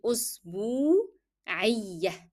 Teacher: Then b with waw. B is carrying dhamma, it is having the combination dhamma and then waw, so I need to lengthen the sound of u. It will be أسبوعية.